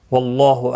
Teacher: واللہ، اللہ کا لام زبر کی وجہ سے پر پڑھا جائے گا. اس کے اوپر کھڑی زبر بھی ہے، ایک الف کی مقدار کے برابر کھینچ کر پڑھیں گے.